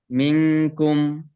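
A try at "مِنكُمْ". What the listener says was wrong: গুণনা আরো বেশি হইতে হবে, মিনকুম।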